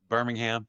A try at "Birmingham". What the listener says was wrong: It's not Birmingham. It's Birmingham, right? Without H.